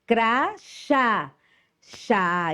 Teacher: Veja que o acento circunflexo, o som é mais fechado. Já o acento agudo, o som é mais aberto.